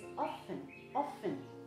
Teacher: The T there is silent. The T is silent.